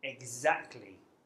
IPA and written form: ɪgˈzæktli (exactly)